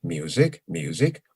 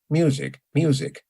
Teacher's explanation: the accent is on exactly the same syllable in music but the pitch pattern is different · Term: pitch movement